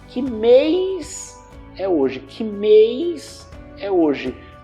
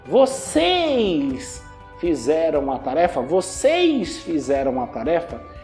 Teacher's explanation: vocês nós tem que ser uma palavra tônica geralmente tem acento a gente fala com o i antes do S